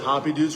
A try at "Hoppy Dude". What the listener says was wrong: He said there's no S.